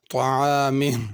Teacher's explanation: طعامی کی طا پر پڑھنی ہے، عین بھی صحیح ادا کرنی ہے، حمزہ سے نہ بدل جائے، طعامہ، آخر میں ہا بھی ظاہر کرنی ہے۔